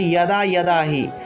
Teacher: অর্থাৎ অন্তস্থ জয়ের পরিবর্তে ইয় উচ্চারণটা আসবে